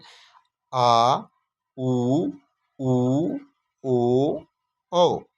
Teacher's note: जिन स्वरों के उच्चारण में जीभ का पार्श्व भाग काम आता है उन्हें पार्श्व स्वर कहते हैं।